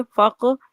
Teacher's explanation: यहाँ पर कलकला आ रहा है कौफ पर, तो इधर कमजोर कलकला करेंगे।